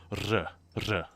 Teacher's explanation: it's an R with a little circumflex above it, or a little V, like a little chevron drawn above it, and it means it's a rolled R with a soft J sound at the same time, so R, and it took me, like, well over a year to get that shit down.